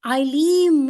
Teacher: تنوین کی آواز علیمن ہے، نون کی آواز کے بجائے میم میں کنورٹ ہو گئی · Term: اقلاب